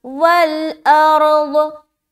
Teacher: रा भी मोटा और दौद भी मोटा, दोनों को मोटा करेंगे